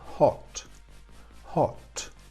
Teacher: hemos pronunciado esa O como una O normal, nuestra en español, una O breve.